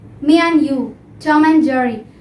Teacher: just remove d from the word and.